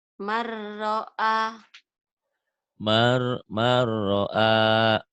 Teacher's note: Dilebur nunnya. N-nya hilang masuk ke ro ini diidghamkan, dileburkan. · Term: idgham bila gunah